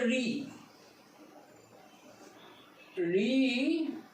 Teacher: দেখো, এই রি উচ্চারিত হচ্ছে মূর্ধা থেকে, রি দেখো, জিভ গিয়ে ভাঁজ হয়ে গিয়ে উপরের দিকে টাচ করছে, একবার মুখের মাঝখানে উপর তলায় টাচ করছে, ভাঁজ হয়ে গেছি।